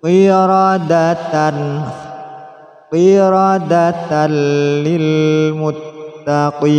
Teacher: tanwin bertemu lam, masukkan suara tanwin pada lam tanpa dengung, tidak disertai dengung